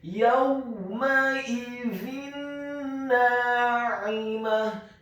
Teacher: Kata yawmaidzin na'imah, huruf ya-nya dibaca tipis, fathah 1 harokat. Kemudian huruf waw-nya dibaca sukun dengan posisi mulut kita agak tertutup dan dengan gerakan yang agak cepat. Kemudian huruf mim-nya dibaca fathah 1 harokat. · Huruf hamzahnya dibaca tipis, tarqiq kasrah 1 harokat. Dan huruf za-nya dibaca tipis, tarqiq lidahnya agak keluar sedikit dengan harokat kasrah tanwin bertemu dengan huruf nun yang tasydid dan fathah 2 harokat.